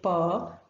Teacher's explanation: you can feel this very thing that when we say per the soft palate is raised and it touches the back wall of the pharynx and then so the nasal passage is closed so it's an oral sound power then when we articulate per the lower lip is in